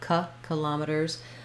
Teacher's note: this first letter I is going to be an I sound, or you can use a schwa